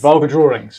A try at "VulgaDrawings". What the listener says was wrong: Vulgar without the R because it rhymes with vulva.